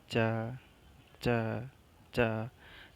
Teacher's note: तालु तालु को जीभ स्पर्श कर रही है।